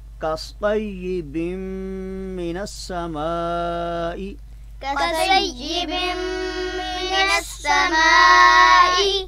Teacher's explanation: یہاں پہ حرف صاد ہے، اس کو ہم نے کئی بار جو ہے وہ عرض کی ہے کہ اس کو تفخیم کے ساتھ یعنی پر کر کے پڑھیں گے، اور پر کر کے پڑھنا اس کے مخرج کا حصہ ہے، لہٰذا کوشش کریں کہ اس کی آواز سین سے نہ بدلے۔